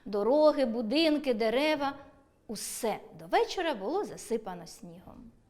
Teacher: Якщо узагальнювальне слово стоїть після однорідних членів речення, то його вимовляємо з підвищенням голосу